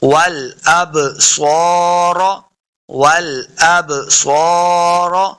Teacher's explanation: والاب، والاب صور، صاد حروف مستعلیہ سے اسے موٹا پڑھیں گے، را کو بھی پر پڑھنا ہے۔